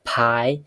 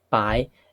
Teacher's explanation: Aspiration can be contrastive in Mandarin. Aspirated P, unaspirated P, and it makes all the difference.